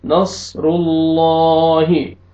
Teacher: रुल्ला, रुल्ला, लाम फतहा अलिफ सगीरा, ला, रुल्ला, हा कसरा ही, रुल्लाही, सौद को ही मोटा करके पढ़ना है, रा को ही मोटा करके पढ़ना है